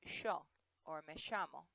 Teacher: In Argentina, especially around Buenos Aires, they actually say sh instead of ya.